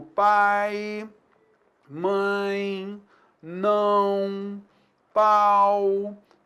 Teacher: Então a gente vai chamar de ditongo decrescente aquele som que decresce. Como eu tenho uma vogal e na sequência eu tenho a semivogal, o som vai caindo. · é chamado de ditongo decrescente porque é sempre na sequência a vogal, que é o som mais forte, e a semivogal, que é um som mais brando